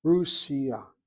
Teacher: A shvana, she writes underneath the samach. Russia, with the emphasis on that first syllable. Otherwise, she won't give that marker.